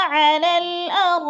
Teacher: را پہ جو ہے مد متصل ہے، چار الفی مد ہے